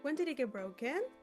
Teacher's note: Notice how your voice goes down a little and then up again. That small change gives emotion to your speech. · Here we use the fall rise to show that we are surprised or even worried. Notice how your voice goes down a little and then up again. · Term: full rise